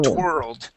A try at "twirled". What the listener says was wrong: Give me that d at the end.